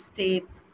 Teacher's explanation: So you have to make sure it's like flat eh sound.